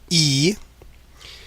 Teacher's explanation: Now if you imagine for this vowel E, written with the letter I, but it's the sound E, that is pronounced with the tongue in the front and as high as possible. So really stretching your tongue out as far to the front and as high as you can go.